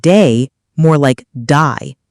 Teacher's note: Australian accent, they may say words like day more like die